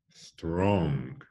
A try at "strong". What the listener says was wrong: There's no g or k at the end. It's just strong.